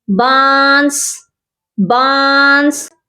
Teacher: جیسے یہ لفظ ہے بانس، بانس، اس میں نون کی آواز اخفا ہے، نون کی آواز کو چھپایا گیا ہے